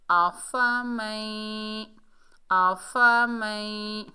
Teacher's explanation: آفا، میم کے اوپر زبر ہے، آگے نون ساکن ہے، نون ساکن کے بعد یرملون کے مجموعے میں سے یا مشدد حالت میں آ رہا ہے تو یہاں پر ادغام مال غنہ ہوگا، میم کو یا کے ساتھ ملائیں گے، غنے کے ساتھ پڑھیں گے۔